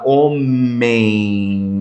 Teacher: O e ele é nasalizado